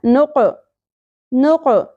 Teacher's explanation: قوف ساکن پہ قلقلہ ہوگا ساکن ہونے کی صورت میں. قوف کو پر بھی پڑھا جائے گا اور قوف کو ساکن ہونے کی وجہ سے اس کو اپنے مخرج سے ہلا کے پڑھنا ہے.